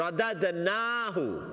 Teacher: नून के ऊपर लॉन्ग फतह है, नून को लंबा कर